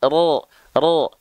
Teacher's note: ini malah kita lafalkan menjadi vokal o ro ro karena huruf ro ketika dia berharakat baris atas dia mesti dibaca dengan keadaan yang tebal